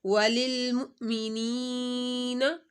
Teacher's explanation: حمزہ ساکن تھا تو حمزہ کے اوپر جھٹکا